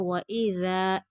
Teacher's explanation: ذال बगैर सिटी के खींच कर पढ़ेंगे, आगे खाली अलिफ है। वइज़ा जा नहीं पढ़ेंगे।